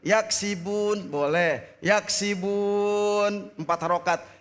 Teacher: Panjangnya boleh 4, boleh 2, boleh 4 dan boleh 6 harokat. Yaksibun boleh karena akhir daripada ayat tersebut adalah waqaf. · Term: mad arid li sukun